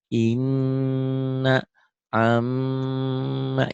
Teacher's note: Ditahan, ada panjangnya, dan gunnah, dengung ke hidung. · Semua huruf yang ada tasdidnya, ini pendobel, sida, dibacanya double. Tetapi spesial nun dan mim ini bukan hanya double, tapi dia ditahan, ada panjangnya. · Bukan hanya double, ditahan dan ada dengungnya ya.